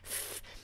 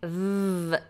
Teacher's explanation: top teeth F it's called a frickative because it vibrates F the difference between F and V is nothing to do with position the position is the same but a v has more voice